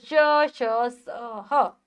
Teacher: जब भी हम इनका उच्चारण करेंगे तो वायु बहुत तेजी से बाहर आती है। घर्षण खाती हुई बाहर आती है। जिसके कारण गर्मी पैदा हो जाती है। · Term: उष्म व्यंजन, ऊष्म व्यंजन